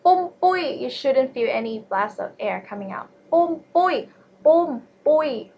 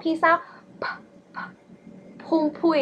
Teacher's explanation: boom boy like that is wrong because it's aspirated. Aspiration means when you say it, there's a blast of air coming out.